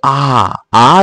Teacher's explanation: আ যখন বল তখন কি হচ্ছে বলতো অনেক বড় ফাঁকা জায়গা তোমার মুখের মধ্যে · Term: বিবৃত স্বরধ্বনি